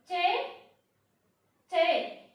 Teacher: अब चे बोलोगे तो आपकी जो टंग जो है ना, आपकी टंग जो है ऊपर के आपके दांत है उनको टच करेगी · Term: तालव्य